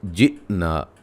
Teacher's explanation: حمزہ کو جھٹکے سے ادا کریں گے، الف مدہ، یہ یاد رکھیے گا، جھٹکے کے ساتھ قلقلہ نہیں کرنا